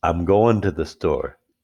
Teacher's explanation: the g gets dropped